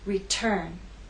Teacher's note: So the true T occurs at the beginning of words, either alone or with other consonants, or at the beginning of a stressed syllable. Return has two syllables, but it's the second syllable that is stressed. T is at the start of that syllable, so we say return.